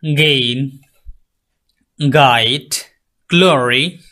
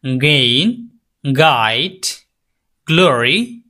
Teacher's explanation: গা সাউন্ড এটাও ভেলার sound the back of the tongue to the ভেলা আপনার হচ্ছে যে জিহ্বার গোড়ালিটা তালুর দিকে স্পর্শ করে সাউন্ডটা বের